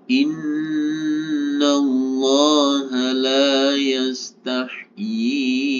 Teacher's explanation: Baru ketika hamzahnya ini kita baca, kita ikutkan dalam pembacaan atau kita wasol, maka yi-nya ini yang kita panjangkan atau harus kita panjangkan sebanyak 4 harokat, 4 ketukan